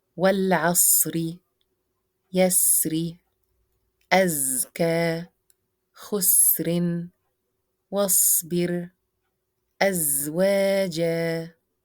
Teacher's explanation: sharpness of the sound as it surges from the narrow space between the front incisors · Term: whistle